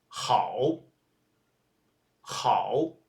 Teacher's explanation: Yeah, this one, R, that's more backwards. In AO or ANG, letter A is pronounced as R, R, R. That's more backwards than the common A.